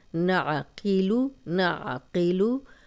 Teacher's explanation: نعقیلو، نعقیلو، پیچھے حلق کی طرف زبان کو دبائیں، انشاءاللہ آپ پریکٹس کریں گے تو نکل آئے گا۔ عین اس کو حمزہ نہیں بنانا، قوف کو موٹا پڑھنا ہے۔ نعقیلو، قیلو، اب زیر اور پیش کو لمبا نہیں کرنا۔